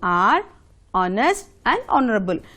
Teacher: Here, H is silent in all these words.